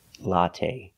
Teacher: The last syllable is the long A. It's not stressed, but we use the long A like say and pay. Latte. Make a long sound.